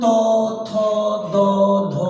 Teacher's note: এই 5টি বর্ণকে উচ্চারণ করতে গেলে আমাদের জিভের যে সামনের ভাগ বা অগ্রভাগ, সেটিকে উপরের পাটির যে দাঁত, সে দাঁতের গোড়াকে ছুঁয়ে বা স্পর্শ করে উচ্চারিত হচ্ছে। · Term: দন্তন্য